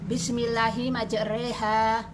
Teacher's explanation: Imalah yaitu fathah dibaca pertengahan antara fathah dan kasroh